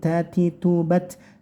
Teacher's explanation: Tinya kasih angin sedikit